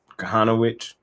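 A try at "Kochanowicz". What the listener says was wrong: Kahanowitz. The C is silent. Like the Z, like W-I-Z. There's no Z. The C is silent. Kahanowitz.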